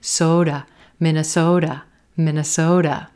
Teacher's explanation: do you notice that T is becoming a da, da, da, quick D sound?